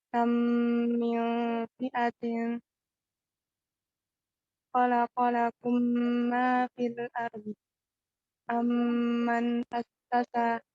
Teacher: Amma tasmiyatuhu idghaman, sebab dinamakannya idgham itu karena idghamil mim sakinah fil mimil mutaharrikati ba'daha, karena memasukkannya mim yang sukun itu kepada mim yang berharokat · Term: idgham mutamatsilain